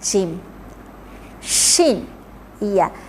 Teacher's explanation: Tengah-tengah lidah tolak dekat langit-langit.